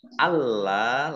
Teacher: Kemudian mim sukun bertemu dengan huruf alif, bacaan idhar safawi dibaca jelas. Allah, lamnya dibaca double, ada tasdidnya. Lam fathah alif, mat tobi'i, panjang 2 harokat.